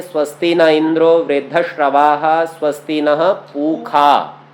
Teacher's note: वास्तव में मूर्धन्य शकार का उच्चारण कुछ संप्रदायों में ख ऐसा करके किया जाता है।